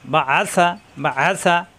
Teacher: আ কণ্ঠনালীতে চাপ দিয়ে বা আসা · আইন কণ্ঠনালীর মাঝখানে চাপ দিয়ে উচ্চারণ করতে হয়।